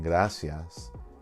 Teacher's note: in gracias, I and A make one sound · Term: diphthong